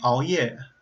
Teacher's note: So when I think of the sound all, I think the best way to approximate that with Chinese sounds is the word all, like an 熬 夜. And all, the beginning of that is actually a pretty good velar approximant because you're bringing your tongue to the back